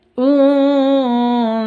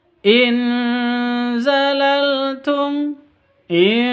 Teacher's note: Bacaan ikhfa hakiki. Non sukun, non mati bertemu dengan za. Samar didengungkan cara bacanya.